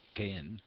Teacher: that is the breathy or unvoiced th as in thin